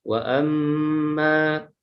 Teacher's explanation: Berarti mimnya mim bertasjid itu dibaca dengung